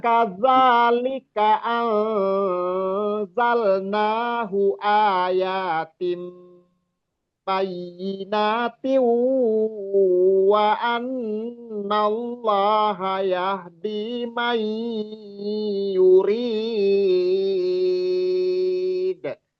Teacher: ikhfa-nya tadi zai misalnya itu ikhfa ausat. Jadi dengung gunnah dan ikhfa-nya samar dan dengungnya berimbang gitu.